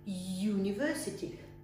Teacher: Первый звук Y, university. А это уже не гласный звук, это согласный, поэтому вы говорите E, university.